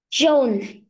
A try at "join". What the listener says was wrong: Ói này. Có âm nơ cuối nhá. Âm ói.